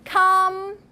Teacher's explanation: Can you pronounce this M with a hook? It's the labial dental.